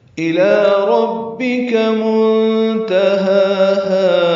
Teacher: ربک میں را پر ہے، کاف باریک ہے. منتہاہا میں نون ساکن کے بعد تا آنے کی وجہ سے اخفا ہے. ہا دونوں برابر لمبے کریں گے وقفاً، 2 حرکات.